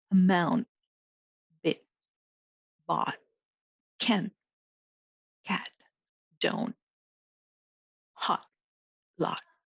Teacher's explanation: When T is the final letter in a word, we pronounce it as what is sometimes called a stop T.